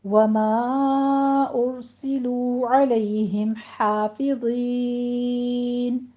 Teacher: ہے، اس کے بعد میم ساکن کا قاعدہ اظہار شفوی ہوگا۔ حافظین میں ہا وسط حلق سے ادا کرتے ہوئے فتح قائمہ ہے ادا کیجیے، 2 کاؤنٹ کرنا ہے